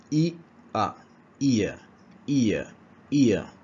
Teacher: The closing e sound moving to schwa.